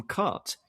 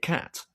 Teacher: The R has changed the vowel in pronunciation. The R sound has affected the vowel that comes before it. It's lengthened it or shifted it